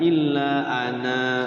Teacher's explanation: kalau wakafnya di Ana boleh dipanjangkan